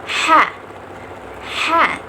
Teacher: Bunyi ini dihasilkan oleh keterlibatan tenggorok atau yang biasa disebut laring. Caranya udara keluar dari paru-paru menggesek tenggorokan. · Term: bunyi laringal